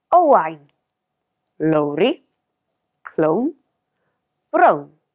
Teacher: Notice the more rounded O sound in Welsh. It's brown in English, but brown in Welsh.